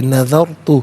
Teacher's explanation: را ساکن ما قبل دال پر زبر، را ساکن کو پر کر کے پڑھیں گے